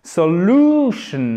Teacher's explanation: accent tonique sur la deuxième syllabe